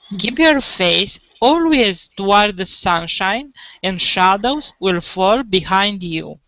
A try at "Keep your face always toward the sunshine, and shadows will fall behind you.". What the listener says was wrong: Okay, so I'm hearing toward and not toward. So you want to get that final, consonant. Easy to drop the final consonant D and T.